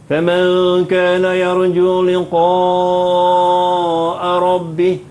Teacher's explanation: liqa panjang 5 harakat